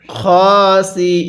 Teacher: ওয়াকফের কারণে নুনের উপর জবরকে বাদ দিয়ে দিব